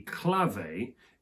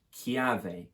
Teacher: they're happy to stick with the original consonant but they knock off the l and instead replace it with an i which creates a e sound clave becomes chiave in italian meaning